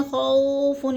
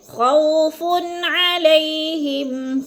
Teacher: وولین کو ہم نے لمبا بھی نہیں کرنا اور جھٹکا بھی نہیں دینا